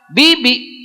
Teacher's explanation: ketika mengucapkan huruf tidak ada nafas yang berhembus atau tertahan di dalam mulut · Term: jahr